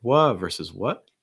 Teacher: some people may cut off the t